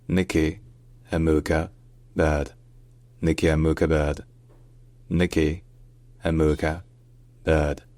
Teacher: her first surname is Amuka, with the stress on the second syllable.